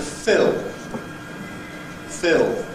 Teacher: on its own that has a Dark /l/ at the end, because it’s not followed by a vowel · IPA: [fɪɫ]